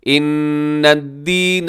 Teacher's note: ان یہاں نون کے اوپر تشدید ہے تو غنہ کیجیے گا۔ دین یا مدہ ہے تھوڑا کھینچ کے۔